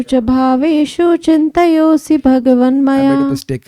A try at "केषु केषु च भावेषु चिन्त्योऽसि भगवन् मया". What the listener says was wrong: चिंत्योसी, वो चिंतयोसी नहीं है, वो आधाता है, चिंत्योसी भगवन् मया। केषु केषु च भावेषु चिंत्योसी भगवन् मया।